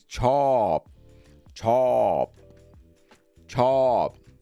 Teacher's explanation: chop it's a falling tone chop it's like jumping off the bridge